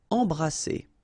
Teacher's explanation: Alright, E-M here, and then you've got a consonant after, so you get the nasal en. So you don't hear any M, it's really in your nose. En. Embrasser.